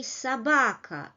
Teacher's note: don't forget that unstressed syllables lose their quality. So we write O, but we say собака.